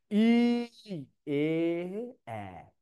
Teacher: এই ইটা, এটা হলো উচ্চ, মানে অনেক উপরে, উচ্চ। একটু সামান্য কমছে, এটা হচ্ছে উচ্চ মধ্য। একটু কমছে, এটা হচ্ছে নিম্ন মধ্য, নিম্ন মধ্য।